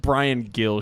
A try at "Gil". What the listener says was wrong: Yeah, they pronounce it Hill. even though it's spelled Gill. He's Spanish.